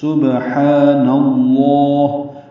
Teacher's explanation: نون کی زبر کی وجہ سے لام اسم جلالہ پر پڑھا جائے گا، سبحان اللہ، لام کو پر پڑھیں گے، لمبا کریں گے۔